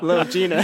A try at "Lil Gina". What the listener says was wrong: Lil Gina, not little, Lil. Lil Gina.